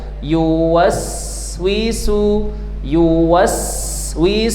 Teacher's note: ketika huruf sin berharakat sukun atau mati, maka mengalirlah sifatnya yang disebut dengan hames, keluar nafas.